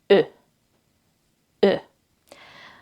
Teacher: it's a bit more round in Hungarian